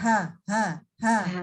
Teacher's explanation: Didorong sedikit dari tenggorokan bawah. Tidak didorong dari dada, tidak boleh membacanya menjadi ha.